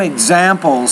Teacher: That's a plural noun, and the S is actually pronounced as a Z.